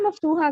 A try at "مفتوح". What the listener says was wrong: مفتوح، یہ مفتوحن بولے اس کو، مفتوحہ نہیں. مفتوحن ہے وہ